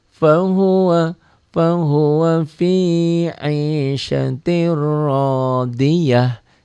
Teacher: tak marbutoh, jika dihentikan jadi berubah bunyinya menjadi ha